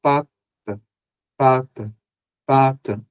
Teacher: Olha a diferença do primeiro A para o segundo A. A diferença é que o primeiro A é mais forte e o último é mais fraco. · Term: pós-tônica